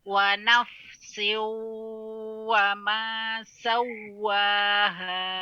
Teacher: Ya, dia bukan diayunkan di situ. Tanwin langsung bertemu dengan waw wa nafsiu ya masuk ke waw dan didengungkan di hidung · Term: idgham